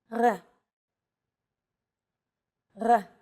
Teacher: letter it's often written as an R but don't be fooled this letter is pronounced differently than an English R it's pronounced at the back of the throat instead of forward in the mouth · It's actually closer to the German or French R, but without the roll.